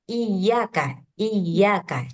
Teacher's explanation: yang benarnya enggak perlu tuh dipanjang-panjangin tuh langsung ditekan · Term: tasydid